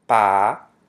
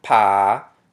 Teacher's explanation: one is unaspirated and the other is aspirated.